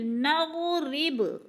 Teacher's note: با حروف قلقلہ میں سے ہے، ہلا کے پڑھنا ہے ، قلقلہ کا معنی ہوتا ہے کہ لفظ کو ہلا کر